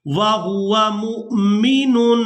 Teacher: یہاں تنوین پر اخفا کریں گے، تنوین میں جو نون کی آواز ہے اس کو ہم نے ناک میں چھپا کر ادا کرنا ہے۔ میم کو حمزہ ساکن کے ساتھ ملائیں گے تو جھٹکے کے ساتھ ادا کریں گے،